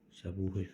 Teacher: amma səbuhi sözündə U uzun tələffüz olunur.